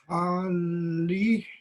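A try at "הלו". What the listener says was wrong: Do the cholam sound by the lamed. Almost a ha and then lo.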